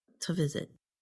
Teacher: And instead of saying to visit, the vowel in the word to gets changed to a schwa, which sounds like So the word sounds like this, to visit.